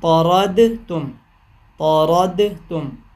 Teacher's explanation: دال کا تا میں ادغام کیا تو طرد تم